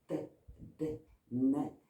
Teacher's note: Donc, il faut apprendre à coincer sa langue de chaque côté et à ne faire activer que l'apex, la pointe. Et on va articuler les t, d, n contre la gencive, derrière les dents du haut, derrière les incisives supérieures